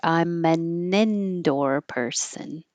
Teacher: It can just get shortened to in or un. I'm an And then the n connects to indoor. So, it'll sound like I'm an indoor person.